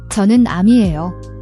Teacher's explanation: The J in geo is a soft J sound, like in jeans, not a hard CH.